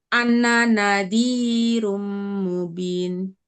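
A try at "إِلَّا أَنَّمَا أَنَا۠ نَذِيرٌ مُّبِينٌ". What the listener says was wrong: Ya, karena nunnya tidak ada tasdid kan, jadi bukan anna tapi ana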